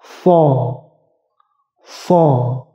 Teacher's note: Tebal, bentuk mulutnya di antara A dan O.